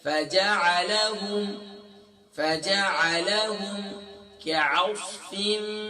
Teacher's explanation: کاف لائٹ ہے، عین لائٹ ہے، صاد فل میں ہوتے ہیں